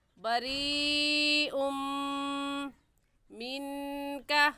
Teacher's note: اس نون ساکن پر غنہ کریں گے کیونکہ نون ساکن کے بعد حروف ہلکی میں سے کوئی لفظ بھی نہیں ہے۔